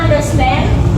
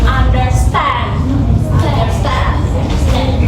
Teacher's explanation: The pattern has three syllables in total. The first two syllables are unstressed and the third one is stressed.